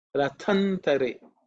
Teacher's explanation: the tha is second letter in the tha varga, it has to be aspirated